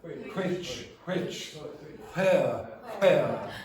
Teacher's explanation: when you're trying to pronounce or WH words, you pronounce it like HW